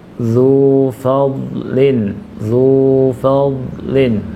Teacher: zunya jangan ditahan, zunya 2 harokat